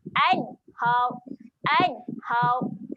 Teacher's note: Kat sini saya nak fokus huruf nun. Nun dia ada tanda mati, jadi dia adalah bacaan yang jelas. Jangan dengung kat sini.